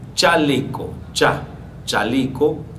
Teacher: dice el fonema africado palatal sordo